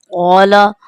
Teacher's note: قاف کو پور کر کے پڑھیں گے، موٹا کر کے پڑھیں گے